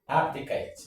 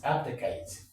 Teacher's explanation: the stress is on the first syllable actually